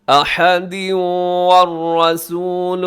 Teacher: یہاں احدن کے نیچے تنوین ہے، تنوین کے بعد واو ہے والرسول کے شروع میں، تو یہاں پہ ہوگا جی ادغام، جسے کہا جاتا ہے ادغام یرملون۔